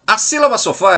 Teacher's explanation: É composta pela sílaba so, a primeira sílaba, e a sílaba fá, a última sílaba. No caso desse exemplo, o fá é a sílaba mais forte. Por isso, a última sílaba da palavra, sendo a sílaba forte, classifica esta palavra como sendo oxítona.